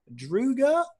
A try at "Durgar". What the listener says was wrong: Oh, Durgar? We pronounce the R's because they exist. Durga.